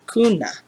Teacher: it sounds like the u in moon or raccoon but just a touch shorter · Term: the u sound